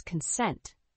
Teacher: The word consent has two syllables, with the stress on the second syllable.